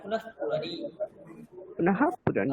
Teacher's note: যদি বিসর্গের পরে যদি আমরা প কিংবা ফ পাই তাহলে আমরা বিসর্গের উচ্চারণ হাফ ফ করতে পারি